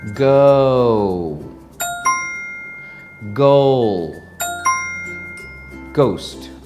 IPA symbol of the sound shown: əʊ